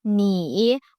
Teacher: 你 with that falling then rising tone means you